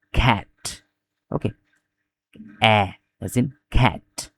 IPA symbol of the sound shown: æ